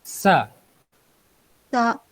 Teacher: बारीक आवाज से पढ़िए, जुबान दांतों से बाहर नहीं निकालनी है